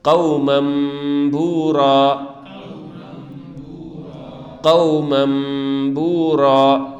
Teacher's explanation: یہاں نون کی آواز نہیں نکالیں گے تنوین میں، بلکہ میم کی آواز